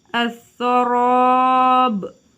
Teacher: Alif lam samsiyah dibaca dengan menghilangkan bunyi atau didabur atau dimasukkan, seperti bacaan as-sarab. Di sini alif lam dimasukkan atau dileburkan kepada huruf sa